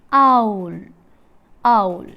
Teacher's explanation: Oo. The lips are unrounded for the first element, ow, and rounded for the second element. The vowel is described as a glide from back open unrounded vowel to back rounded vowel just above half close. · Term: diphthong